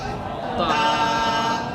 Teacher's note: زبان کی نوک کے اوپر کے دانتوں کی جڑ کی طرف والے آدھے حصے سے لگے تو کیا ہوگا؟ تا